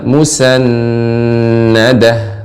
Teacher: nun yang bertasydid dipanjangkan gunnahnya Ibu. Musannadah.